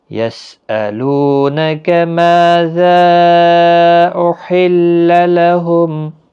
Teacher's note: یسألو لو و مدہ ہے، نا کا کو کھینچنا نہیں، ما الف مدہ ہے، ذا مد منفصل ہے، یہاں پر چھوٹی مد 3 الف کی مقدار کے برابر کھینچ کر پڑھیں گے۔ احل ہا کا خاص خیال رکھیں، وسط حلق والا ہے، تشدید کا بھی خیال رکھیں، تشدید والا حرف تھوڑا سختی کی ضرورت تاکہ تشدید ظاہر ہو۔